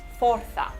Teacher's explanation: Fuerza se dice forza, es con la O abierta, que viene de fortia.